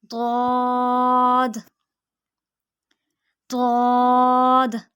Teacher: زبان کی کروٹ اور اوپر کی داڑوں کی جڑ سے یہ ادا ہوتا ہے